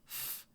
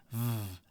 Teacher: In the English language, there are only two labiodental consonant speech sounds, a ff and a vv, where the bottom lip makes contact with the upper front teeth, and air is forced through the narrow gap between them